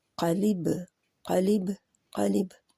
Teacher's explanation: लिब लिब, पहले होंठ बंद होंगे और फिर खुलेंगे, तो बा के ऊपर कलकला हो जाएगा। कलकला होता है, आवाज़ बाउंस होके आती है, जैसे दीवार पे गेंद मारे तो गेंद जो है जब टकराती है तो एक आवाज़ सी पैदा होती है, क़लिब क़लिब क़लिब।